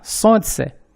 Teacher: Na sequência de consoantes L, N, C, a consoante L, a primeira da sequência, não é pronunciada